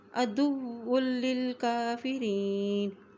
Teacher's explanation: ملا رہے ہیں کیونکہ واو کے پر شد ہے، اسی طرح واو کی دو پیش کو لام کے ساتھ ملاتے ہوئے پڑھیں گے کیونکہ لام کے اوپر بھی شد ہے